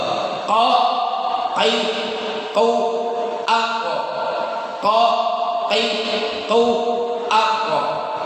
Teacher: Kalau qaf letaknya di sini, ya, di pangkal lidah bagian bawah. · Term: huruf qaf